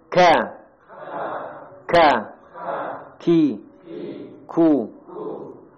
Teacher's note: ada perbatasan antara langit yang lunak dan keras nanti lidahnya nempelnya di situ